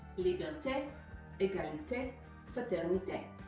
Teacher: We are emphasizing the last syllable in these words, and that is the common rule of thumb for French.